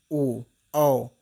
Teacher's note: देखिए आपका कंठ से भी आवाज आएगा और ओठ आपका देखिए ऊपर नीचे होता है, ओ औ। तो कंठ और ओष्ठ की सहायता से ओ और औ का उच्चारण किया जाता है। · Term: कंठ और ओठ